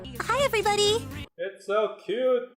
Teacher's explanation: has this gentle manner speaking generally accompanied by a higher pitched tone